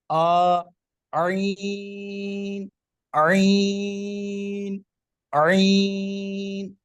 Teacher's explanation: عین کو یوں سمجھیں کہ جب آپ حلق سے آواز کو نکال رہے ہوں گے تو یوں تھوڑا سا آواز کو نچوڑیں گے، نچوڑنے کے سٹائل سے باہر لائیں گے آپ آواز کو، یعنی آ کی آواز کو ہلکا سا نچوڑیں گے تو عین کی آواز بنے گی